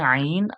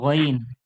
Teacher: আইন ওখানে গলাটা চেপে হয় আইন, আর এখানে গইনটা এভাবে গলা চেপে গইন না বলে সিম্পল গইন।